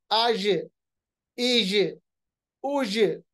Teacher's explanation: जीम पे भी जब जज्म होता है, सुकून होता है, जीम की आवाज भी वापस आती है, जिसको हमने नाम दिया था कलकला, रिबाउंड। जैसे कौफ की आवाज वापस आती है, जीम की आवाज भी वापस आती है।